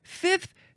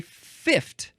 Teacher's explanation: you can say fifth with an f and a th and you can also say fif